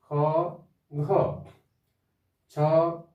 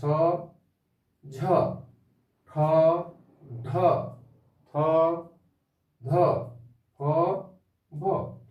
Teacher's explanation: আর বর্গের দ্বিতীয় আর চতুর্থ এই বর্ণগুলি উচ্চারণ করার সময় শ্বাস বায়ু অধিক পরিমাণ বের হয়, বেশি পরিমাণ বের হয়। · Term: মহাপ্রাণ বর্ণ